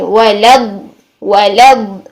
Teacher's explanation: لام ساکن ادا کریں گے، درمیانی سی آواز چلائیں گے اور پھر لام زیر والا ادا کریں گے جو کہ ہماری تشدید میں 2 لام شامل ہیں